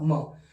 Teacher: ओष्ठ हो गया। तो म का दो उच्चारण स्थान हुए, ओष्ठ में भी गिना जाएगा और नासिका में भी गिना जाएगा